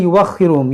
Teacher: मिन दाब्बतिन वलाकिन युअख्खिरुहुम, यहाँ पर भी देखें ये वाव जो है ये हमज़ा की कुर्सी है, ये वाव नहीं पढ़ेंगे बल्कि हमज़ा पढ़ेंगे